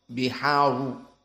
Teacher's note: Maka di sini al-biharu dalam keadaan dhammah berarti dia tafkhim.